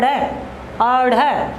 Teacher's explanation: क्योंकि जब हम अढ़ देखिए जीभ हमारी पहले ऊपर स्पर्श करती है और फिर नीचे दांतों में आकर गिर जाती है, अढ़ अढ़। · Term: उत्क्षिप्त व्यंजन